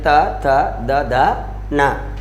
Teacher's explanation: ट, ठ, ड, ढ, ण। त वर्ग का उच्चारण स्थान क्या माना गया है? दांत, दंता